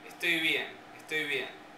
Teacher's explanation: Entonces, esta regla de que la regla que aplica a abuelo, digamos, la regla que se aplica a abuelo, es decir, entre dos vocales es fricativa, se aplicaría en frase, estoy bien.